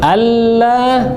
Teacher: Enggak usah dengungkan. Enggak boleh dengungkan karena enggak ada nun dan mim.